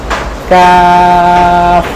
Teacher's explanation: জিহ্বার গোড়া থেকে একটু সামনে উপরের তালুর সাথে লাগিয়ে খুব ইজিতে কাফ